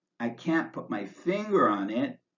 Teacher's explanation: And when says, I can't put my finger on it, I can't put my finger on it, we use pause intonation. The voice goes up on the last stressed word before the comma, then wavers down and up slightly to show that you haven't yet finished your thought.